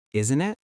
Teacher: Notice the rising tone at the end, isn't it? Your voice goes up a little.